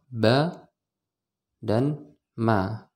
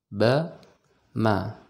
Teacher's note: ini adalah dua huruf yang sama-sama ketika kita mau mengucapkannya, kita merapatkan bibir dulu.